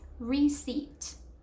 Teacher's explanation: The P is actually silent. So no pronouncing the P at all.